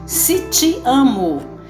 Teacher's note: o som da vogal e no português em Minas Gerais é i